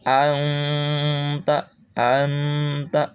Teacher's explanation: dengung ini adalah suara masuk ke Pangkal hidung ya suara masuk ke Pangkal hidung kalau n ini berarti tidak · ini tempelkan lidah kita ke huruf Ta ini ke makhrojnya adalah ujung lidah ditempelkan ke pangkal ya pangkal gigi atas ke Pangkal gigi atas pakai dengungan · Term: samar-samar dan dengung